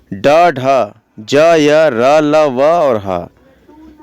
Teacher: और सघोष की बात करेंगे तो इन ध्वनियों के उच्चारण में स्वर तंत्रियों में कंपन होता है। प्रत्येक वर्ग के तृतीय, चतुर्थ और पंचम वर्ण जैसे कि ड, ढ, ज, य, र, ल, व और ह एवं सभी स्वर, ये सारे सघोष हैं।